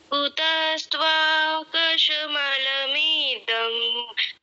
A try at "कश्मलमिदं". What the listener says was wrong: कुतस्त्वा कश्मल बोला, स पूरा बोल दिया।